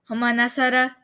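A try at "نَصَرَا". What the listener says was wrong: Nasara, like a little bit longer.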